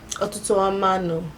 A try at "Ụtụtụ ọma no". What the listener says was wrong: Perfect.